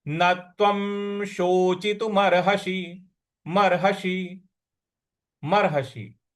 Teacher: व के ऊपर जो अनुस्वार है उसका उच्चारण हमको म ले आना है